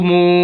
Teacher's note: वाव साकिन है और ये वाव मद्दा है, इस वजह से मीम को लंबा कर रहे हैं।